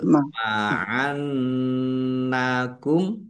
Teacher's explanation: nun tasdid dibaca guna atau mendengung ditahan biar tampak mendengungnya